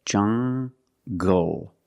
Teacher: Make the hard g sound, jungle. So you have the nasal sound and the hard g, jungle, go.